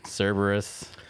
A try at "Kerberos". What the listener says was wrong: Kerberos. It was with a K.